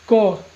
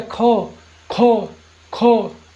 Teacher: खो को बोलने में अधिक हवा निकलेगा मुख से